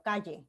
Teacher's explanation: igual que la L, la lengua deja pasar el aire por los dos lados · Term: sonido más lateral